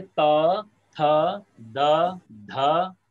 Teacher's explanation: पांचों अक्षर में जीभ को दांतों से टच होना ही पड़ेगा। यदि कोई कोशिश करके बिना जीभ टच करे बोल ले, इसका मतलब वो अशुद्ध बोलेगा।